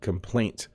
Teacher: You do have to hit the T at the end when you say that.